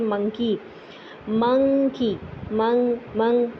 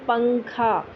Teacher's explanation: آپ جو ہے وہ نون کے لیے آواز ناک میں سے گزارتے ہیں لیکن زبان جو ہے وہ تالو پہ نہیں لگاتے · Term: اخفا